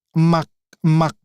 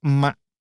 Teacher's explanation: You don't pronounce the letter K. It has glottal K there. If I pronounce that with true K, emak, emak, but we usually do not pronounce like emak.